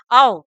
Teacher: अर्ध संवृत्त से थोड़ा अधिक मुख खोलते हैं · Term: अर्धविवृत्त स्वर